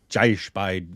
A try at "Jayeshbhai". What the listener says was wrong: Jayeshbhai. I think there's an H sound in there. I could be wrong. Jayeshbhai.